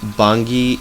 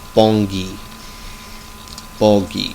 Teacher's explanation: that's a nasal vowel running into that G and not a um uh an NG for instance in uh